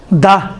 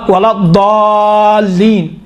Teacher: دال اور ضاد میں فرق ہے، دال تھوڑا سا باریک ہے، ضاد اسی دال کو تھوڑا غلیظ بناؤ، موٹا بناؤ تو ضاد بن جاتا ہے